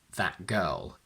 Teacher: the glottal stop keeps the a as short as it should be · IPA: ʔ